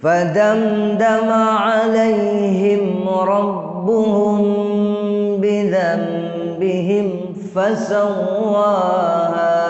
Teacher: Rabbuhum mim mati bertemu ba, hukumnya ikhfa syafawi, dengung